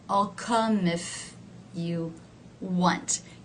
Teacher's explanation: you can see that if is one of the words that is not stressed it is lower in pitch